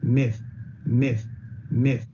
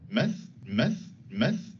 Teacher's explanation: new zealanders tend to centralize this sound so instead of the tongue being arched up a little bit towards the front of the mouth it's relaxed down a little bit towards the middle of the mouth